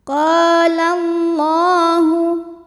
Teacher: Hukum tajwidnya adalah mad tabi'i zahiri, sebab ada alif yang sebelumnya berharokat fathah. Maka cara bacanya qaf dipanjangkan 2 harokat